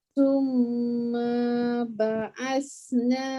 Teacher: 2 kali lidah keluar pada huruf sa.